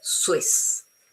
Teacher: So remember that this one is pronounced sui. And so it's very easy to have a proper S, not a Z